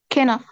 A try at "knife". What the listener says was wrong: لا ال key silent knife